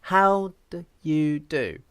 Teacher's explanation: so i don't use the vowel oo here i just say da i use a schwa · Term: weak syllable